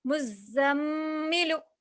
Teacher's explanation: मीम के ऊपर तशदीद है, अब इसको हम क्या करेंगे गुन्ना करके पढ़ेंगे